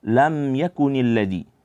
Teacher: Di kata lam yakunil ladzi, di situ ada huruf mim bertemu dengan huruf ya, yang ini hukumnya adalah izhar syafawi, di mana dia dengungnya tidak terlalu panjang